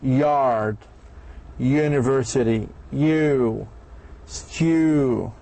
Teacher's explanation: The palatal sounds E of yake is made by placing the front of the tongue up close to the palate, produced with tongue close to the hard palate, like extreme production of E, like the word yard, university, you, stew.